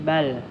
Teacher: Ada lagi bal, itu bal alif lam qamariyah. Alif lam dibaca jelas al.